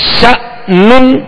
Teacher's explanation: श जब कहेंगे तो जबर है चूंकि शीन की, और हमजा में झटका देंगे, आवाज और मुंह खोलकर अदा करेंगे।